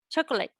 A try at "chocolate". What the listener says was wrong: Okay, I'm afraid, I'm sorry to tell you that you're wrong, because this is also a long word. So actually the correct pronunciation of this is this one. Chocolate. Can you see that in both cases, we can see that the vowel in between disappears?